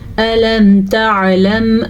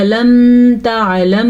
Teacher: اسے کہتے ہیں اظہار شفوی، یعنی کہ ظاہر کر کے بغیر غننے کے پڑھتے ہوئے چلے جائیں